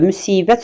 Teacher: Müsibət sözündə i saytı uzun tələffüz edilir və həmçinin də qapalıdır.